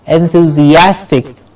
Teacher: The A sound gets the stress.